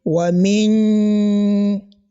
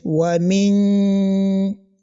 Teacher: allow the sound of this nun to pass through your nose. As we knew, nasalization always pass through the nose.